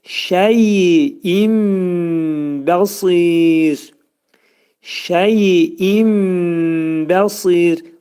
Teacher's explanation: İqlab olacaq. Nun hərfi bəyə yetişdikdə mim hərfinə çevrilir.